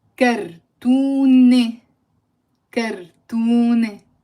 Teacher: So there is no pronunciation of the t in the end.